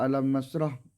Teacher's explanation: huruf mim sukun yaitu bertemu dengan huruf nun, cara membacanya yaitu terang di bibir dengan mulut tertutup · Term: idghar sawawi